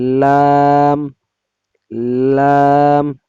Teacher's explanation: জিহ্বার আগার কিনারা সামনের উপরের দাঁতের মাড়ির সঙ্গে লাগাইয়া লাম